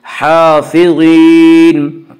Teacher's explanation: ज़ुआ को पर पढ़ेंगे। ज़ुआ हरूफ मुस्तालिया में से है।